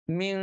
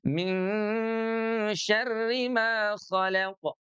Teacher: Kalau kita baca dengung itu kerasa ada getaran di hidung kita gitu ya.